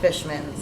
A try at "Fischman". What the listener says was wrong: It's Fischman, okay? There's no S.